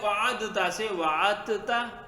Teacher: ادغام کر کے تا کا تا میں واجب ہو جاتا ہے، دال کو تا کرتے ہیں، تا کو تا میں ادغام